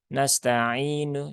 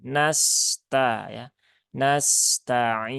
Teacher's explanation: sin itu ya dia punya sifat rokhawah ya, mengalir ya dan punya sofir ada desisannya. Maka jangan dibaca nasta'inu tapi nasta ya.